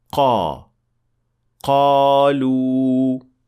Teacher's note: the tongue should be touching the soft palate to make it sound like a correct qaf